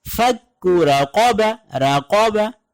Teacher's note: پہلے کاف باریک ہے اور دوسرا کاف یہاں پر موٹا ہے